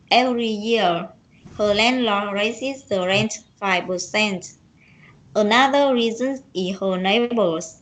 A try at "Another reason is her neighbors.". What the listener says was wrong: Is thiếu chữ S.